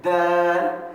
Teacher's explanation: زبان کی نوک اور اوپر کے دانتوں کے مسوڑوں کو لگنے سے